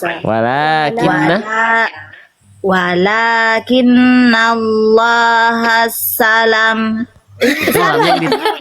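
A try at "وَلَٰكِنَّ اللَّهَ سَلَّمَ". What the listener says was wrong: Terbalik itu mah yang ditasdidkan lamnya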